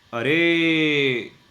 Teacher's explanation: इस ओ को 3 बार बोला गया है, यानी कि 3 मात्रा का टाइम इसको दिया गया है। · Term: त्रिमात्रिक स्वर